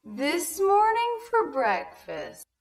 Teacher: Also, I noticed the rhythm here. Morn and breck are the two stressed syllables.